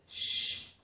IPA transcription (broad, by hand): ʃ